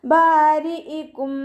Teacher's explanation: ബാരിഇകും ബാൻ്റെ കൂടെ അലിഫ് മദ് വന്നു, 2 കൗണ്ട് മാത്രം നീട്ടുക. റോ കെസ്റയാണ്, താഴ്ത്തി ഉച്ചരിക്കുക കേട്ടോ. രീ എന്നുള്ള സൗണ്ട് കൊടുക്കുക.